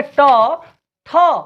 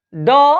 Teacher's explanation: कम कंपन होगा, ड में कंपन बढ़ जा रहा है